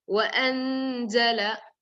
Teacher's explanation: The noon should be heard little. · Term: hide the noon